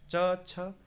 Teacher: जीभ टकरा रही है क ख य कंठ से बोले जाते च वर्ग तालू से जीभ टकराती है